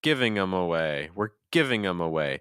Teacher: in this case we're removing the th